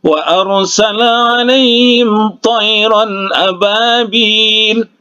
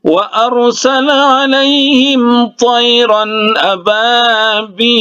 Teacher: Nah, karena dia di akhir kalimat, di akhir ayat, maka dia dihukumkan mad arid disukun ya, bisa 2 harkat, bisa 4 harkat, dan bisa 6 harokat. Jadi wa arsala alaihim tayran ababil, 2 harkat.